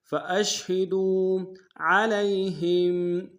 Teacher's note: عین کو گہرائی سے ادا کریں گے ، لام کو یا کے سامنے لانا، یا لین بغیر کھینچے